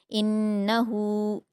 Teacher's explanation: नून मुशद्द है गु्ना करेंगे।